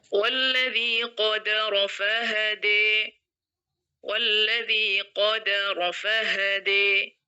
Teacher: Kalau pada bacaan Imam alqisai selain ujung ayat yang kita imalahkan, lafal qaddaro yang kita baca qaddaro pada hafaz ini di sini kita hilangkan syiddahnya